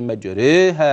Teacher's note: اذا فلازم الاماله ترقيق الراء